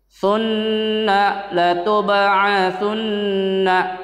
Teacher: Lagi-lagi gunnah, kalian harus dengung membaca nunnya itu.